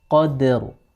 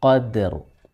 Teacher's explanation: Qad, tidak boleh qadar, tapi qad, dalnya tipis, qadr. Ra-nya ketika disukun, dia memiliki sifat tafkhim atau tebal. Qaf sebelum dal itu juga tebal, sedangkan dal itu sendiri ketika disukun, dia memiliki sifat tipis.